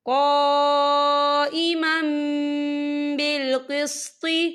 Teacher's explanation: اور یہ دیکھیں قائما، میم کے پر تنوین ہے اور تنوین کے بعد جو ہے با آ رہا ہے، تو یہاں پر اقلاب ہوگا یعنی تبدیلی ہوگی۔ ہم پچھلے میم کو اگلے میم کے ساتھ ملا کر پڑھیں گے اور ہم یہاں غنہ بھی کریں گے